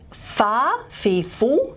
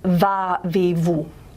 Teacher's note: So lip to teeth, and the airflow is constricted and it becomes turbulent